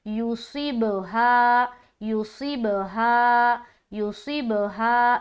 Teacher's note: यहाँ पर सौद मोटा भी रहेगा और सीन की सीन नहीं, सीटी की आवाज़ जाहिर भी होगी, क्योंकि सौद के अंदर भी हर्फ सफ़ीर पाया जाता है।